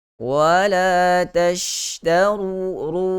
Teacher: Huruf shin itu keluar daripada pertengahan lidah, menghambur keluar, sifatnya disebut sebagai tafashi.